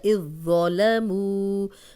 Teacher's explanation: مو واو مدہ، جزم والی واو پیچھے پیش، 2 حرکات لمبا کریں گے